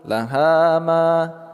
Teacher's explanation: Ha panjang dua harakat. Ma juga panjang dua harakat.